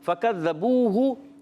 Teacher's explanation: واو مدہ ایک الف کھینچ کر ادا کریں